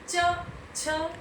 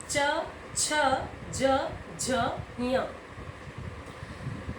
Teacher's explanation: अब तालव्य, च, छ, जो आपकी जीभ है वो तालव्य से टकरा रही है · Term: तालव्य उच्चारण स्थान